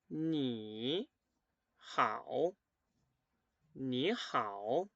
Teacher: cuando tengo dos palabras que son tercer tono juntas la primer letra se va a leer segundo tono